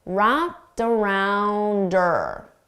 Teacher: we commonly get rid of the H sound on her. So I can do that here as well, and then I can connect it together